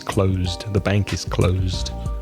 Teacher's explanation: So close with the voice sound is the verb, to close.